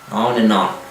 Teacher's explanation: Porque a conjunção and, né? Na hora da fala coloquial é bem an, né? O D não aparece e fica, né, esse som an.